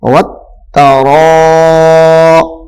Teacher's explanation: اس کو ذرا 2 یا 2.5 الف کے برابر کھینچ کر پڑھیں گے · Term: حروف مدہ